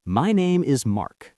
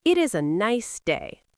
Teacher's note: The down sound tells the listener, stop. I am finished. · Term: the fall